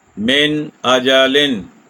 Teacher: تنوین ہو یا نون ساکن ہو اس کو خوب ظاہر کرنا ہے، لیکن رکے بغیر ہم آگے حرف حلقی ادا کریں گے۔ یہ طریقہ ہے اظہار کا۔